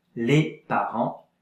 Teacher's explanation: A bit of air has to come out through your nose when you pronounce it. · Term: nasal sound